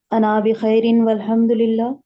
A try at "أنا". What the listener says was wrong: اچھا، انا کو لمبا نہیں کریں گے، ٹھیک ہے؟ انا الف تو ہے لیکن الف یہاں پہ پڑھا نہیں جاتا انا میں، تو اس کو انا